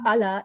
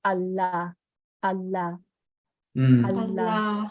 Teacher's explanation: in English we tend to um have shorter consonant timing but in Malayalam we want to make sure that we really get that consonant timing